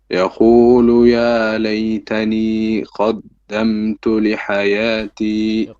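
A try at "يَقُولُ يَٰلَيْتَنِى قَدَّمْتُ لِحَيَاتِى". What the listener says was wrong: قاف needs work. It's يقول قاف. يقول.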